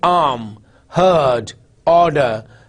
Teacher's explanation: although the R is there but it's not pronounced the sound is not pronounced